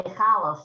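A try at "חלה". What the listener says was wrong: Well, that's not correct. The same way as Hanukkah is not a H sound. It's a Hanukkah.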